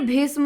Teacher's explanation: भीष्म में होता है मूर्धन्य स।